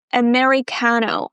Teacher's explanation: Even though it's the letter A, we don't pronounce it as the A sound, as in apple, right? We start with the schwa.